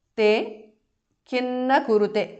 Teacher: Kim na becomes kinna because of Sandhi.